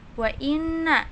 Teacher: guna sebab nun bertasjid dan ini dengung